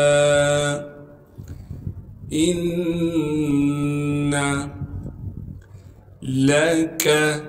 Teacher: لام کو باریک کر کے پڑھیں گے اور لام کاف کو بھی باریک کر کے پڑھنا ہے